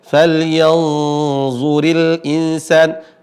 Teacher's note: huruf ra yang berharakat kasrah ya falyanzuril Insan dia dibaca tipis maka dia Ro asal muasalnya adalah tipis memang bukan dibaca dengan